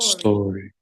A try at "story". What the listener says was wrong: No story. Story, no. Story. Story. The letter, it's just the letter S. You don't have to open your mouth. No tienen que abrir la boca. Solo hacen el sonido de la S.